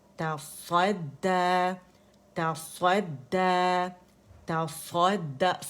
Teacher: سوا نہیں بولیں گے، ہونٹوں کو نہیں استعمال کریں گے، ٹھیک ہے، کیونکہ صاد کا مخرج ہونٹوں سے نہیں